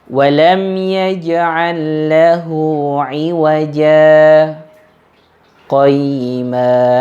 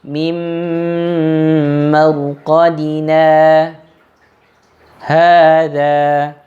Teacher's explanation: Inilah yang disebut dengan bacaan saktah. Jadi berhenti dia tetapi tanpa mengambil nafas yang baru.